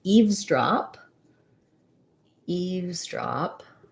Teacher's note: about compound nouns so we have syllable stress on both syllables primary stress on eaves so i'm going to be long on eaves but still have a clear vowel um on the drop syllable